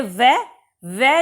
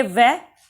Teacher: सूत्र क्या होगा इसका, वकारस्य दंतोष्ठम, यानी कि वह को कैसे बोलेंगे, दांत और होठ से